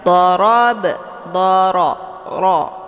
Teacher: Ra hukum bacaannya ditebalkan karena ra-nya berharokat fathah dengan posisi pangkal lidah naik ke langit